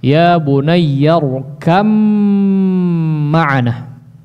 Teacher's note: Huruf ba sukun bertemu dengan huruf mim, maka ya secara jalur periwayatan harus diidghamkan, ya, tidak diizharkan.